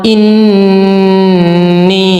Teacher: Ini, nah ini adalah nun musyayyadah, jadi bacanya agak ditekan